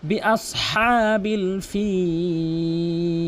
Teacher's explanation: বিআসহা বলতে হবে এবং হাকে একালিফ টেনে বলতে হবে